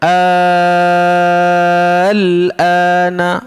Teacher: Panjang sahaja tanpa dengung · syarat dia kena panjang 6 harakat dulu baru boleh baca huruf selepasnya, iaitu huruf lam yang berbaris sukun tu. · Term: mad lazim kalimi mukhaffaf